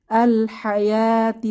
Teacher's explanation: মাঝে যে ওয়াও এটা উচ্চারণে আসবে না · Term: অনুচ্চারিত অক্ষর